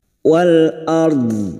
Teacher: ro kita baca tafkim dulu karena didahului fathah dan sambil kita lonakkan dengan huruf tepi lidah nempel pada gigi